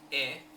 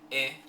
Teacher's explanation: sound is rounded ooh your lips are rounded but for example the e sound e is unrounded e there's no rounding going on